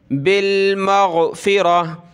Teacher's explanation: गोलता जो है वक़फ़ में हा बन जाती है